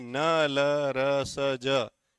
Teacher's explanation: वत्सरी वर्ण है। इनका जो उच्चारण होगा वह दांतों के मूल से होगा। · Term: वत्सर्य वर्ण